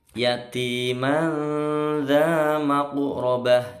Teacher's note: Ini ikhfa hakiki, mandza. Maqrabah, qafnya sukun, mantul kecil dengan mencucu, ya, meninggi. Maqrabah, ya, taknya jadi ha.